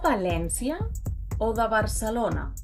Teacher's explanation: So whether you see a B or a V, you pronounce both with the same B sound.